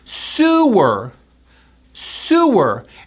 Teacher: This word is a noun, and we pronounce it with that oo sound, that tight oo sound, lips forward